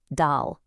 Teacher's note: dah is your standard everyday d sound like in dog, right at the front of the mouth. But to make the dah sound, you have to flatten your tongue a bit, make it deeper.